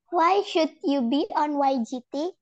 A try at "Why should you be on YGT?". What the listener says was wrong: I still hear the L. Why should? No L.